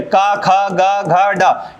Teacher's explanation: ये जो पूरे होते हैं ये कहां से बोले जाते हैं? कंठ से बोले जाते हैं।